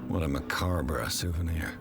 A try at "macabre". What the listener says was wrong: Dude, you put the R in the totally wrong... Macabre.